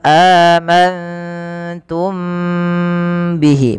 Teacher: Kemudian mim mati bertemu ba, ini ditahan teman-teman, suaranya ditahan, amantum bihi, bukan hanya sekedar amantum bihi. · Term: ikhfa syafawi